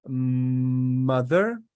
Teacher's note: M sound you produce by closing your mouth and letting the air flow through your nose.